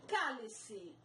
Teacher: palavra que tem a antepenúltima sílaba mais forte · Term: proparoxítona